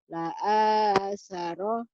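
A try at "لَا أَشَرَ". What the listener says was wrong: Shinnya. La asyara. Shin.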